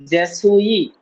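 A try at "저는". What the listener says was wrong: সুই কেন হবে? সুই বলে তো এস এর মতো উচ্চারণ হয়, এটা হবে চয় ছ, যে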